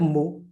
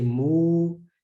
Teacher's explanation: you're going to add the wow mad which extends the dhamma